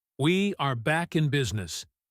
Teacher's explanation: He stresses back and business. The rhythm is bouncy and resolves the tension.